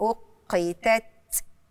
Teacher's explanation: لضعف الاعتماد على مخرج التاء لانه من حروف الهمس يعني اللي لازم يجري معاها شويه نفس عشان الصوت يبان